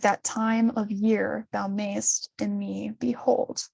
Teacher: time and then year and i feel like those are like more stressed than on stress · every second syllable's the one that's stressed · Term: iambic pentameter